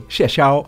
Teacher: ‘谢 [Xiè]' is fourth tone, ‘虓 [Xiāo]’ is first tone.